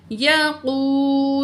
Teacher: واو ساکن ہے، پچھلے الفاظ پہ پیش ہے، واو مد ہے، 2 پوائنٹ کھینچ کے پڑھیں گے